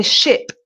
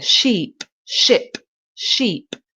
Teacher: if you say ship I is quick and sheep sheep is longer